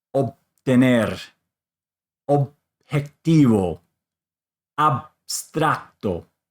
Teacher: you're just going to bring your lips together and not have any explosion. So they will come together because it is followed by a consonant.